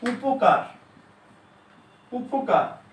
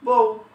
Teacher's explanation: এই উপকারে কিন্তু উ উচ্চারিত হচ্ছে, হ্যাঁ, কিন্তু বউতে উটা উচ্চারিত হচ্ছে না। এই জন্য এই বর্ণগুলো কি হচ্ছে মাঝে মধ্যে অর্ধ স্বরধ্বনির মতো উচ্চারিত হতে পারে, পুরোটা উচ্চারিত না হয়ে অর্ধেক উচ্চারিত হতে পারে।